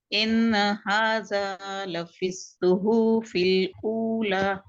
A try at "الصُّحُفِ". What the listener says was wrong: صحوفی نہیں, مد نہیں ہے وہاں پر. صحوفی. دیکھیے ہیوی لیٹرز کی پریکٹس کریے, اور جہاں پر نہیں کھینچنا ہے وہاں پر نہیں کھینچیں گے, اور ایسے جلدی سے ان هذا لفی الصحف الاولى ایسے نہیں.